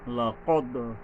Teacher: কলকলা মানে প্রতিধ্বনিত, শব্দটা আবার কিছুটা ফিরে আসবে